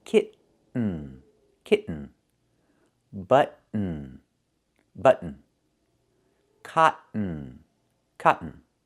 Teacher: do the stop T and fall to the N